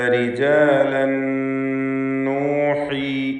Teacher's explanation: റിജാലൻ എന്നതിലെ തൻവീനിന് ശേഷമുള്ള നൂനിൽ പൂർണ്ണമായും ലയിപ്പിച്ച് മണിക്കണം. ഇദ്ഗാം ബിഗുന്ന കാമിൽ.